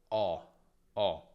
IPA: ɔ